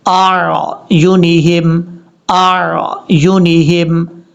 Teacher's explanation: حمزہ سختی سے پڑھا جائے گا، عین نارمل طریقے سے